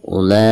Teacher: Dan di sini ada mad tabi'i ya, ada mad tabi'i lalu berhadapan dengan huruf hamzah, namun hamzah di sini berada dalam satu kata atau dalam satu kalimat ya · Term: mad wajib muttasil